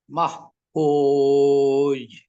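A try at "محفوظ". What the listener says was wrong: এই যে এখন কিন্তু ধরার সময় কিন্তু শেষে ছাড়ার সময় মোটা করে ছেড়েছেন। এটাই হচ্ছে আসলে আমাদের আজকের এই র-এর বিষয়টা।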